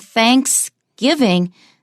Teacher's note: the stress is just on giving